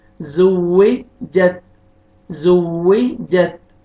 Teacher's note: تا کا لائٹ سے ساؤنڈ آئے گا، یہاں پہ قلقلہ نہ ہو جائے، ایسے جت زو وی جت ایسا نہ ہو جائے، زو وی جت زو وی جت۔